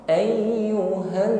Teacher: harus sampai keluar Bunyi gunah atau bunyi dengung di alkhaisyum rongga hidung